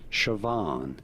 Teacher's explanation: you do want to stress on the second syllable